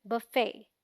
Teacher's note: the FET has a silent T, so it sounds like fay, as in say, and is the stressed syllable, meaning इस पर थोड़ा जोर देकर बोलेंगे, fay, ना कि fe.